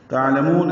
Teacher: تعلمون عین ساکن اظہار، لام باریک، مون میں واو مدہ کے بعد نون ساکن، وقفاً مد عارض للسکون